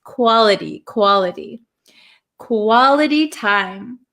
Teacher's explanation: this T is surrounded by 2 vowel sounds. So this becomes a flap T